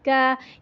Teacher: اردو کی طرح بالکل اسٹریٹ الف نہیں پڑھا جاتا، ہلکا سا ترچھا ہوتا ہے، زبر بھی ہلکا سا ترچھا ہوتا ہے۔ اردو میں با زبر با ہوتا ہے، با، لیکن عربی میں با زبر ب ہلکا سا ٹیڑھا ہوتا ہے، ترچھا. اس کی وجہ سے حرکات چھوٹی رہتی ہیں، اپنے مقدار پہ رہتی ہیں.